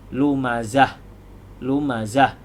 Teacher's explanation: dia bila berhenti tetap dimatikan dan menjadi ha sukun. Jadi lumazah, lumazah jadi ha. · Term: ta marbutah